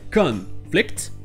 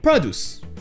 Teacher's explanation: Quand ce sont des noms, tout comme le désert, desert, ce sera la première syllabe qui sera accentuée. Donc vous aurez conflict, un conflit, conflict, et produce, un produit, produce.